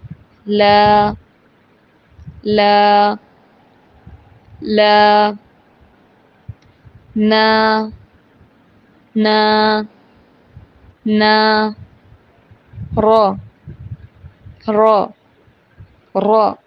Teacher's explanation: جب لام، نون، را کے اوپر زبر آئے گی تو پھر ہم لام، نون، را نہیں ادا کریں گے، بلکہ پڑھیں گے لا، نا، را۔ لا، نا، را کو ادا کرتے وقت زبان کا کنارہ اوپر کے دانتوں کے مسوڑوں کو لگائیں گے تو ادا ہوں گے